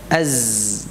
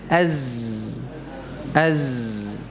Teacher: Nah, zai ini huruf safir ya, az ya. Jadi ada suara yang tajam yang keluar dari aliran yang sempit ya, di antara gigi seri ini.